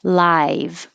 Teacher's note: when you say I, your tongue has to rise from the ah to the e.